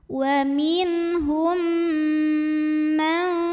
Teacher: Berikutnya ada hukum idgham mimi karena ada mim sukun menghadapi huruf mim yang berharokat. Maka mim pertama yang sukun dileburkan atau dimasukkan ke mim kedua disertai bunyi dengung M tahan